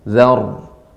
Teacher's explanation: ra yang sukun sebelumnya huruf yang berharakat fathah, maka ditebalkan ya ra-nya yang sukun